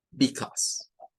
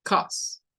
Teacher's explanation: A veces el because le quitan el be y solo dicen cause